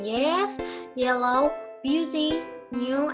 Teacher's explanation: The only palatal sound in English is as in yes, yellow, beauty, new, and it is voice.